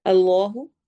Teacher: اس میں جلالہ ہے، اس کے لام کو ہم موٹا پڑھیں گے